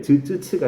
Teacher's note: 그래서 스 발음을 해보시면 어디서 마찰이 되는지, 마찰음이란 무엇인지 우리가 알 수 있습니다. 파찰음은 그 중간 어디쯤 되는 말들이에요. 파열과 마찰이 동시에 다 일어난다라고 판단되는 어중간한 애들, 즈츠츠가 해당이 됩니다.